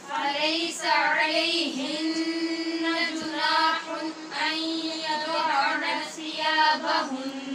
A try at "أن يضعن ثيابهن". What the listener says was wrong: اب یضعنا پڑھنے کی کوشش نہیں کرنی. أن يضعن ثيابهن